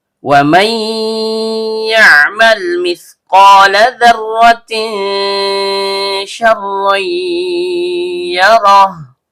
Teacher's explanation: Karena nunnya sukun bertemu dengan huruf ya yang keluar dari tengah lidah naik memantul ke langit-langit, maka terjadi hukum bacaan idgham bigunnah naqis. Nun sukunnya dibaca lebur ke huruf ya disertai dengung yang kurang sempurna.